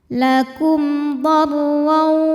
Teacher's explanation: Di sini hurufnya adalah huruf dhad. Maka mim sukun dibunyikan dengan jelas. M bunyinya ya dan tidak ditahan. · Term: izhar syafawi